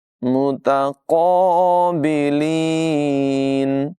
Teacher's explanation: क़ाफ की आवाज़ पुर होगी